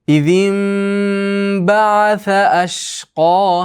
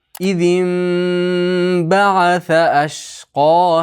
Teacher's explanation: nun mimga aylanib ketadi. Chunki ba yo'l qilib kelyapti.